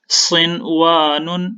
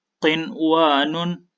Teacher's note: یہاں پر میں نے ادغام پر غنہ نہیں کیا یعنی ناک میں آواز کو نہیں ٹھہرایا